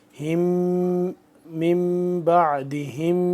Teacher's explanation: آگے میم آ گیا مشدد، تو اس پہ ہم غنہ کریں گے